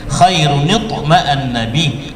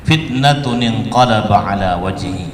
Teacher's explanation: Kemudian yang kedua yaitu dalam kalimat fitnatun inqalaba, ya, ada nun kecil juga, ada tanwin bertemu dengan hamzah wasal, maka memunculkan nun kecil atau nun wiqayah.